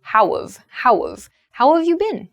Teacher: how have gets reduced to how of